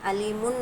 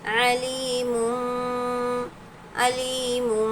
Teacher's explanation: تنوین کی آواز کو ہم کو میم میں بدلنا ہے۔ علیمن نہیں پڑھا جائے گا، علیم، علیم اس طرح سے پڑھنا ہے۔